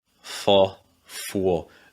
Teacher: Notice how fool has that dark L sound at the end.